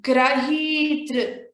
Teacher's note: gra we should give a stress while pronouncing, but whereas for tr we should not give a stress. So there is no stress there.